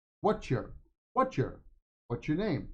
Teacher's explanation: what's your sounds like a church a CH sound